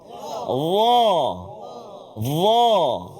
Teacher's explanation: Hujung lidah keluar sikit huruf dha